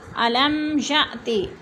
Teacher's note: अलम मीम साकिन के बाद या गया तो इजहार शफ़ी हो रहा है, गुन्ना नहीं करेंगे